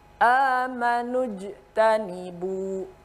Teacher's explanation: huruf jim dibaca memantul, qalqalah ya, memantul